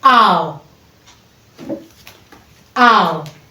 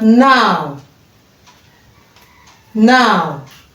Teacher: ow from ah to oo.